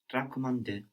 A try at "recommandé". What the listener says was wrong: You're remembering that the E changes to an A, but I think you got the wrong E or an extra E. Recommandé.